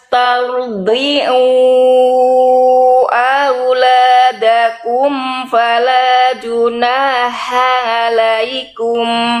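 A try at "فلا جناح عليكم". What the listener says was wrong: Ainnya tegaskan lagi sedikit, nggak apa-apa. Ainnya tadi nyampur sama ha.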